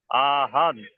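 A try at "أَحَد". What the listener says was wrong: টান দিচ্ছেন কেন?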